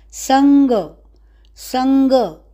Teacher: क ख ग घ ग, एक ग अनुनासिक, ग अनुनासिक ग वर्ग यानी क वर्ग का, क ख ग घ ग, संग।